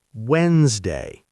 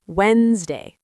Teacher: native speakers say Wednesday. The d in the middle is completely silent.